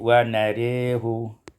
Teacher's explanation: wa narahu ibdal imalatu fathatur ra, diimalahkan fathah ra menjadi wa narihu.